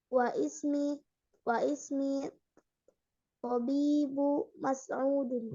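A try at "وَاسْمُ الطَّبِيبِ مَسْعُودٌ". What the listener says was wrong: Nah, isim yang kedua dibaca tidak? Hamzahnya. Wa ismu atau wasmu? Nah, wasmu.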